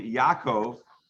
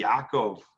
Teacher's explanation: the ayin is a much more guttural sound. So we say Yaakov, they say Yaakov to emphasize Yaakov, and it's much more of a guttural sound.